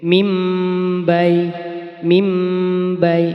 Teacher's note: Dengan ditandai mem kecil, yakni bacaan iqlab ya. Nun sukun bertemu ba, maka bunyi nun sukun ini diganti menjadi bunyi mim.